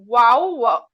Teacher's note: दोनों होठों के मिलने से बा मीम और वा वाव गैर मदा अदा होगा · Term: शफरी